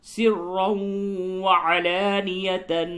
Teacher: سرا تنوین کے بعد واو ہے، ادغام مع الغنہ ہوگا